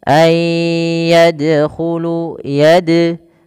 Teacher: Huruf dal di sini adalah bacaan qalqalah yang di mana dalnya harus mantul tidak dibaca ayyadkhulu.